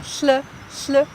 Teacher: Algunos sonidos que son distintos del español es uno que fonéticamente se describe como lateral fricativa sorda, pero suena como una L sorda.